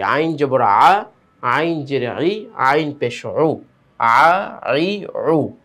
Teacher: গলার ভিতর থেকে উচ্চারণ, এবং সেটা তাড়াতাড়ি